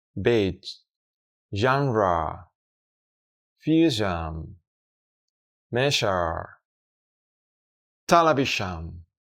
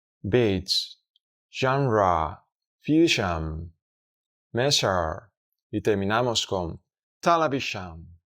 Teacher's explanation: Este sonido se pronuncia como el sonido anterior, SH sound, pero en este caso activaremos las cuerdas vocales haciéndolas vibrar para crear sonoridad. Por ese motivo pasamos de representar su pronunciación en español de una SH a una ZH.